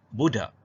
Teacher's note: Hentian glotis ialah bunyi keh yang tidak dapat dibunyikan sebagai bunyi keh apabila bunyi itu, iaitu bunyi keh, berada pada akhir kata.